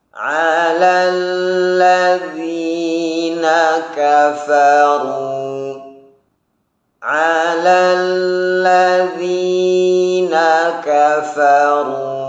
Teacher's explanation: sifat rakhawah daripada huruf dzal, yaitu mengalirnya suara huruf ketika mengucapkannya. Jangan sampai ketika mengucapkan huruf dzal ada sifat hams.